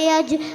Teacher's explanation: جیم حرف قلقلہ کے 5 حرفوں میں سے ہے، اس لیے جیم میں قلقلہ ہوگا